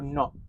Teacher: In the word not, the word final t undergoes glottalization, turning into a glottal stop, which is very common in Australian English, turning from not to not.